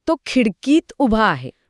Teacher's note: इथे खिडकीचा इ आणि आतचा आ एकमेकांसमोर आले पण इ हा पूर्व स्वर असल्यामुळे तो जिंकला आणि आ हा हा पूर्णपणे लोप पावला फक्त इ राहिला. अगदी